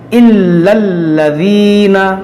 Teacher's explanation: یہ اسم جلالت نہیں ہے، یہ لام ہے تو اس کو باریک پڑھیں گے